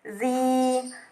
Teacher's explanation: Yang keenam, berhukum tajwid mad tabi'i, karena huruf za berharokat kasroh bertemu dengan huruf ya sukun, zi, maka dibaca panjang sepanjang 2 harokat.